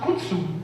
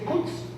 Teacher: So then he realized that the Mayas put together two syllables and they dropped the last vowel to make a more compact word. So they don't pronounce kutsu to refer to Turkey, they say kuts.